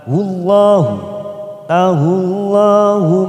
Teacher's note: lam jalalah didahului dhammah, maka kita baca tafkhim atau tebal.